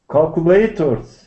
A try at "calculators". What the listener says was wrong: Well, yours is on the third syllable, but I think that's not the best place for it.